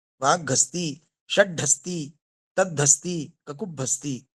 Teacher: यहाँ हा का घा हो गया वाग्घस्ती में, षड्ढस्ती में हा का ढा हो गया, तद्धस्ती में हा का धा हो गया और ककुभस्ती में हा का भा हो गया। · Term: वर्णागम